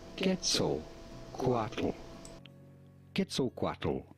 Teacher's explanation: There is no strong emphasis on any particular syllable. · You may hear a lot of English speakers say it as Quetzalcoatl, including many pronunciation videos right here on YouTube say it as Quetzalcoatl, but that's completely wrong. The nearest pronunciation you can get it to the natural Nahuatl pronunciation would be not Quet at the beginning, but rather Ket.